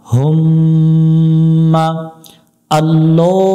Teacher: দিয়ে পড়তে হবে লাম খারা জবর ল হা মিম পেশ হুম মিমের উপর তাশদিদ এই মিমে গুন্না করা ওয়াজিব এটাকে ওয়াজিব গুন্না বলে এখানে গুন্না করতেই হবে মিম জবর মা